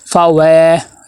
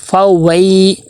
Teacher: فاوی یہ مجہول ہے، فاوئی یہ معروف ہے